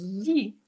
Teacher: tongue to the top of my palette but if you notice top and bottom row of teeth are together and i almost let the air come out from the side of my tongue